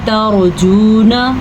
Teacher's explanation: را ساکن سے پہلے حرف کے اوپر زبر آ گئی ہے تو پھر اس را کو ہم پر پڑھیں گے